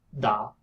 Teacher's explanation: in a bridge it's actually like a square bracket looking down to pronounce these you have to touch the inner part of your upper teeth with your tongue tip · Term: dental